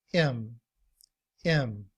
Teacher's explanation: when we reduce the word him we drop the H sound and we just say m